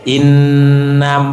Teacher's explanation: inna karena ada tasidnya jadi harus ditahan tetap ditahan tapi enggak lama nahannya